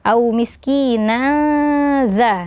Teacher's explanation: huruf nun tanwin bertemu dengan huruf dza hukumnya adalah ikhfa Hakiki ya jadi dibaca eh samar · Jadi dibaca samar nunnya, tanwinnya dibaca disamarkan.